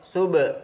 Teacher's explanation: yaitu qalqalah sugro, ada ba mati di tengah kalimat, cara membacanya memantul